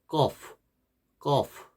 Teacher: 거프 우리나라에 없는 발음. 쌍기역하고 유사한 것 같지만 좀 다릅니다. 더 깊은 목구멍 소리입니다. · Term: 목구멍 인두 소리